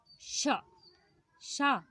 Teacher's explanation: शा को बोलने में हवा हमारे मुख में घर्षण कर रही है, यानी ये ऊष्म व्यंजन है और इसको बोलने से हमारे मुख से गर्म हवा निकलती है, चा को बोलने से नहीं निकलती।